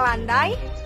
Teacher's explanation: bunyi ai pada kata Indonesia landai, sonoritasnya terletak pada unsur pertama. Karena itu, bunyi ai dalam bahasa Indonesia termasuk diftong turun.